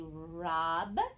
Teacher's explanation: that o is the ah sound because it's a closed syllable